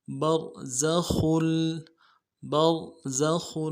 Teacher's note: با کو را کے ساتھ ملانا ہے، را کو موٹا کریں گے ، زا سیٹی والا حرف ہے، سیٹی نکالیں گے، خا کی